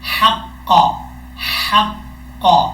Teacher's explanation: آواز گلے کے درمیان سے نکلے گی